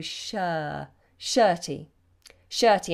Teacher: So you must get this vowel pronunciation correct. It's a wide vowel. Sh, shirty. We don't pronounce the letter R.